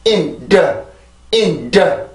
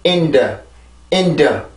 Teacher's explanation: 이 음절의 시작은 D 발음인데, 이 D 발음이 순수 음절의 시작일 경우에는 여기 앞에 강세 음절의 시작일 때보다 공기를 막아주는 힘이 상대적으로 약해져야 돼요. 절대로 강해지면 안 되고 상대적으로 약해진 상태에서 공기가 너무 세게 나오지 않게 조절을 해줘야 되죠.